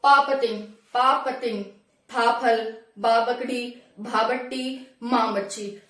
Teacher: जो भी हम इस वर्ड को बोलेंगे जब, तो सिर्फ हमारे जो हमारे होठ हैं वही आपस में टकराएंगे। देखो, पापतिंग, पापतिंग, फाफल, बाबकड़ी, भाबट्टी, मामच्छी, तो सिर्फ हमारे होठों का यूज हो रहा है। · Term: ओष्ठ ग्रुप